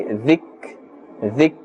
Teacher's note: Kaf is not part of the huruf qalqala, and therefore we cannot and we must not bounce the sound. There must not be an echo.